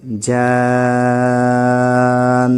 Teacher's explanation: یہاں پر بھی مد لازم ہوگا۔ جیم الف نون زبر جان، یہاں پر نون مشدد ہے اس لیے گنہ کریں گے ، اور حرف مد کے بعد سکون اصلی آ رہا ہے